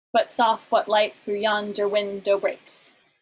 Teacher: an alternating pattern of an unstressed and then a stressed syllable 5 times. So an unstressed and then a stressed syllable is called an iamb, and that's one of the kinds of metrical foot. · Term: iambic pentameter